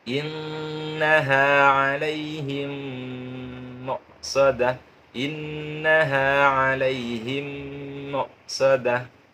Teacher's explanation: mim yang pertama dimasukkan ke mim yang kedua, kemudian didengungkan. Tarmihim innaha alaihim muqsadah, alaihim muqsadah. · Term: idgham mimi